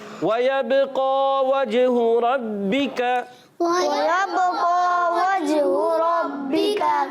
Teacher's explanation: کاف کو باریک رکھنا ہے. کاف حرف لہویہ میں سے ہے.